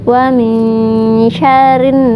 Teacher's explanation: di huruf nun ada tasydid, berarti hukumnya gunnah, ditahan 2 harokat.